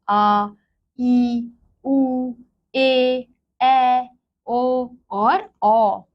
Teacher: तो इनके उच्चारण में हमें ह्रस्व स्वर से दुगना समय लग रहा है, इसलिए ये क्या है, हमारे दीर्घ स्वर हैं।